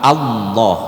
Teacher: lidah kita tu naik semua langsung ke langit-langit makanya dia disebut tebal